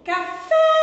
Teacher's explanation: e o acento agudo ele tem um som aberto